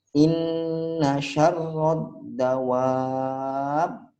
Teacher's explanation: inna itu nun syiddah atau nun tasydid itu ditahan 2 harokat, dengung, baru kita lanjutkan